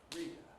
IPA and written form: ˈriˑdə (reader)